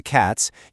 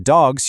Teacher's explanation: When you pluralize the word cat to cats, you naturally use an S sound. But when you pluralize dog to dogs, you actually use a Z sound.